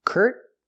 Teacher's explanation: You stop the air with a T. Curt. Put the tongue up.